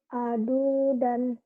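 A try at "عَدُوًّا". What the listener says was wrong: Gak ada yang panjang. Adudan. Adudan.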